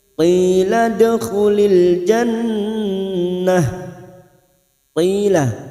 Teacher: asar diikuti ya sukun 2 harokat, mat tabi'i. Qila dal sukun qalqalah sugro yang mati asli di tengah kalimat kita pantulkan qalqalah sugro.